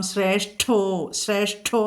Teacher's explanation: ശ്രേഷ്ഠോ എന്നുള്ള ഷ്ഠ കടുപ്പിക്കണം. അതിഘരമാണത്. നമ്മൾ ഏറ്റവും ബലം കൊടുക്കേണ്ട അക്ഷരമാണ് ഈ അതിഘരം കേട്ടോ.